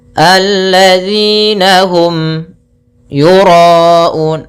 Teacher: ada mim mati bertemu ya, kita namakan dengan bacaan izhar syafawi, yaitu suara mimnya harus dibaca dengan jelas tanpa ditahan.